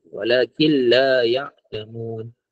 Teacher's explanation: Idgham bila guna ada dua huruf, lam dan ra. Jadi nun mati bertemu dengan lam, dia memasukkan walakil tapi tidak ada dengung.